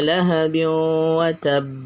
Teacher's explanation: tanwinnya hilang dimasukkan ke dalam Wow Idgham Bighunnah harus didengungkan